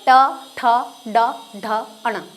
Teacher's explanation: मूर्धा का मतलब आप सोच लो मुड़ गया, मूर्धा यानी मुड़ गया। हमारी जीभ ऊपर की साइड मुड़ने के बाद में धक्के के साथ बाहर आती है और फिर जो वर्ण उच्चारित होते हैं वो मूर्धा से होते हैं।